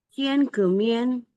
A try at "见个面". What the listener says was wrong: 面 ada 4. Boleh sekali lagi? 见个面。